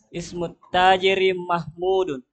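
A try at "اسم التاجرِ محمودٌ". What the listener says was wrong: Jangan segan-segan tanwinnya. Mahmudun. Ismut tajiri Mahmudun.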